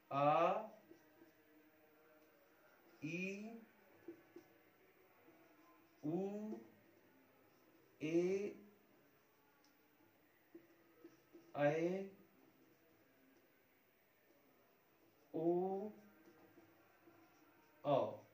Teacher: ये सभी दीर्घ स्वर है। इनके उच्चारण में दुगना समय लगता है।